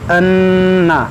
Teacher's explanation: وَلَوْ أَنَّ لِكُلِّ نَفْسٍ ظَلَمَتْ، دیکھیے اَنَّ نون میں غنہ ہوگا کیونکہ مشدد ہے